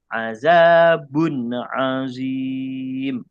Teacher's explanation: ini tidak boleh dengung jadi baca dia azabun azim jelas